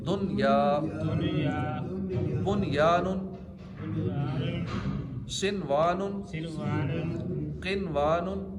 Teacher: نون کو ظاہر کیا، دن، نون کی آواز آئی، غنہ نہیں کیا، دن، یہ نہیں پڑھا، دن یا. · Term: اظہار مطلق